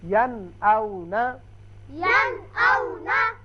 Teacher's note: نون ساکن کے بعد حمزہ آ گیا لہذا نون کو ظاہر کر کے پڑھیں گے